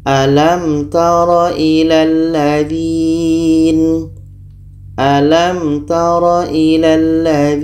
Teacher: Apa yang dibaca jelas mim jelas ta jelas dan tidak boleh dengung kita baca alam taro ilalladzin alam taro ilalladin contoh yang keempat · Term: izhar syafawi